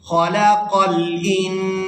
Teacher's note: یہاں نون ساکن پر اخفا کیا جائے گا، آواز کو ناک میں کچھ دیر روک کر رکھیں گے